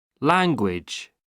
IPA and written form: ˈlæŋgwɪʤ (language)